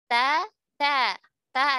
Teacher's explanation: ta ada hams, tapi tidak terlalu mengalir ya, karena dia ada syiddah. Jadi jangan ta, tidak boleh ta ya, tapi ta biasa saja supaya syiddahnya tetap ada.